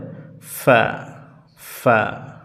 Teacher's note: দুই ঠোঁটের মাঝখান দিয়ে বাতাস বের হবে